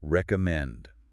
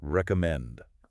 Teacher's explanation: Now, the trick to making this sound natural is the stress, the musical rhythm. The strongest, loudest part of this word is the very last part, recommend. Listen again to how my voice rises at the end.